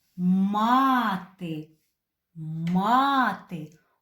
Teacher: у цьому слові два склада і наголос стоїть на першому складі мати над звуком і буквою а ось така рисочка вона позначає